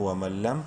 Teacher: نون ساکن کے بعد لام حروف یرملون میں سے ہے، ادغام بلا غنہ ہوگا